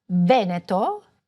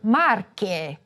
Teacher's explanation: Sometimes E's or O's will be open or closed. A closed E in Veneto and an open E for Marche